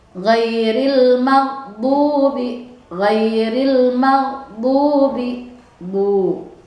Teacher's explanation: Jadi u harus dibaca u dengan jelas. Tidak boleh bunyi seolah-olah ngambang u-nya atau sehingga samar antara o dengan u.